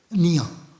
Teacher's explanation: La ñ es una palatización de una n más una y